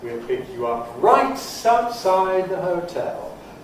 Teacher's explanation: So this is a Low Prehead with some stresses in it. Then a High Head, a High Stepping Head · Now, intonation, it started low-pitched. We'll pick you up, da-da-da-da-da-da-da-da, low-pitched. Then it jumped up for right. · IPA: wil ˌpɪk ju ˌʌp ˈraɪt aʊtˈsaɪd ðə həʊˎ_tel_